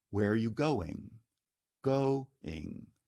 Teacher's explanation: Accent is on the stressed syllable, go, of going, and it's high-low, a falling step intonation.